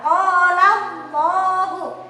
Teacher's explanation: Lafaz Allahnya dibaca tebal karena huruf sebelum Allah ada huruf yang berharokatkan fathah atau dhamma. Di sini hurufnya berharokat fathah, maka Allahnya tafkhim atau tebal.